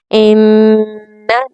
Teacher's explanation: ناک سے گنگناہٹ کی آواز آنی چاہیے۔ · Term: غنہ